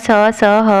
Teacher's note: जब हम इनको बोलते हैं तो थोड़ी सी ऊष्मा हमारे मुंह से, थोड़ी गर्मी सी गर्माहट हमारे मुंह से निकलती है, तो उनको कहते हैं ऊष्म संघर्षी व्यंजन।